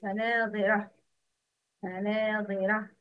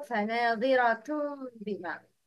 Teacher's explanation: In this word فناظرة فناظرة I stopped by sound of ها but when I continue فناظرة بما I continue with the sound of تا